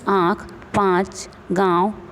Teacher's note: अनुनासिक ध्वनियों में हवा मुख के साथ साथ नाक से भी निकलती है। इसे दर्शाने के लिए चंद्र बिंदु या चांद बिंदु का चिन्ह लगाते हैं, जैसे आँख, पाँच, गाँव आदि।